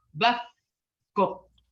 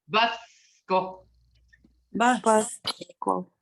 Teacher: you don't hear that C, but your tongue is on the bottom of your front teeth. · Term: the C sound